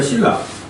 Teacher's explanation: 리을 앞에 니은 비음이 있는데 발음상 뭐로 바뀌어 버려? 리을로 바뀌죠. 이걸 유화라고 합니다. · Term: 유음화